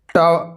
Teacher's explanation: ट जो है यह आपका दांत से उच्चारण नहीं होता है, यह आपका मूर्धा से उच्चारण होता है